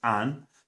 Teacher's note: The word for and in Bristolian is an, no D sound